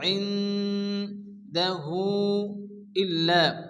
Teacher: এই মদের পরে দ্বিতীয় ছন্দের শুরুতে হামজা আসছে, মধ্যে মুনফাসিল চার আলিফ টেনে পড়তে হবে।